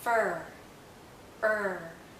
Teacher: This is a very closed sound. Is a high vowel, so our mouth is very closed and our tongue is generally in a high position. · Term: central vowel